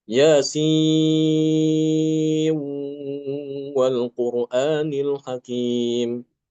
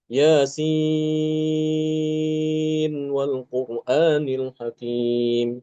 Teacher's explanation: Dia mengidghamkan nun pada kata sin itu, pada huruf sin diidghamkan ke huruf wawu.